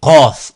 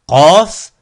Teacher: qaf, un son grave emphatique